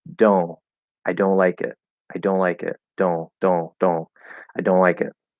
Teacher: And because we don't officially have a nasal O sound, it's going to sound to an English speaker as if there is an N there, even though I don't close my tongue into the N. I'm just doing an O through the nose. · Just do a D plus a nasal O. And because we don't officially have a nasal O sound, it's going to sound to an English speaker as if there is an N there, even though I don't close my tongue into the N.